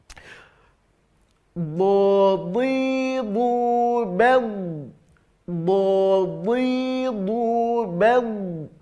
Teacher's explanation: Makhraj huruf do yang pertama, tepi lidah bagian pangkal tempelkan ke gigi geraham atas, baik kiri maupun kanan, atau langsung kiri dan kanan juga bisa, tergantung ya, tergantung kebiasaan kita makainya yang mana.